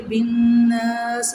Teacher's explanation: نون شدت پہ غنہ کریں گے، الف مدہ ہے، ایک الف کی مقدار کھینچ کے پڑھیں گے